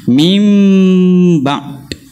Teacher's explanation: Itu salah. Kembali semula ba yang syadidah majhurah, ikut sifatnya yang sebenar.